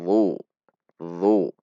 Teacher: Pangkal lidahnya menegang sehingga huruf menjadi tebal. Sementara ujung lidahnya sama persis dengan huruf dzal, tidak berubah. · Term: huruf dha